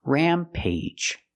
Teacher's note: use a long a sound plus J the hard J sound like juice and jump